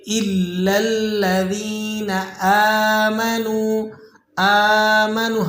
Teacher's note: الا الذین آمنوا، آمنوا، حمزہ پر کھڑا زبر لگا ہوا ہے تو آپ اسے ایک الف تک کھینچ لیں گے۔ اسی طرح نون، یہ نون کے بعد جو واو ہے یہ واو مدہ ہے، آپ اسے ایک الف تک کھینچ لیں گے۔